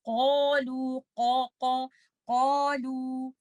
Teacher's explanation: This is letter kaf and this is not letter qaf. For letter qaf, we have to remember this is an isti'ala letter. We have to keep our back of the tongue up.